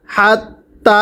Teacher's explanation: এরপরে হাতা জবর হাত, তায়া খারা জবর তা, হাত তা, হরফের উপর খারা জবর এক আলিফ টানতে হবে। হাত তা, ইয়া জবর ইয়া, মিমিয়াজের মি, ইয়ামি, ঝালাম জবর ঝাল, হাত্তা ইয়ামি ঝাল, খ জবর খ, বায়াজের বি, জেরের পরে ইয়া সাকিন এক আলিফ টানতে হবে।